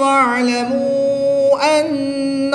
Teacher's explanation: یہاں پر واو مدہ کے بعد حمزہ دوسرے کلمے میں ہے تو یہاں پر مد منفصل ہوگی، 2 سے 3 الف تک کھینچ کر پڑھیں گے